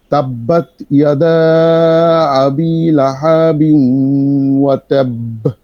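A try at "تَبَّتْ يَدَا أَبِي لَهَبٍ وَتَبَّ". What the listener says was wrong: তাব্বাত ইয়াদা আবি লাহাবিন লাহাবিন এরকম টানা যাবে না। লাহাবিন ওয়া তাব। তাব্বাত ইয়াদা আবি লাহাবিন ওয়া তাব। লাহাবিন গুণনাও করতে হবে।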